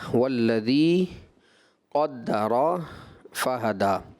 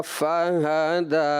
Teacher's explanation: دال پڑھنے کے بعد ہونٹوں کو ملا دیا، تو ہونٹوں کو جب آپ نے ملایا تو ایسا لگا کہ میم کی آواز آ گئی۔ یہ ہوا غیر محسوس انداز میں، لیکن جب آپ اس کو سنیں گے تو یہ غلطی آپ جج کر پائیں گے۔